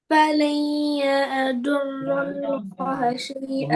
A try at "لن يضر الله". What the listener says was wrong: रुल नहीं है, रल्लाह।